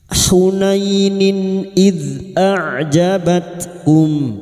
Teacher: Maka bunyi kasar tanwin dibaca jelas tanpa mendengung. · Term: idhar halqi